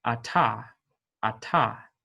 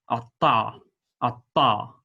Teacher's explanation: there is some constriction in the throat while it is being pronounced just like a normal T otherwise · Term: pharyngealized stop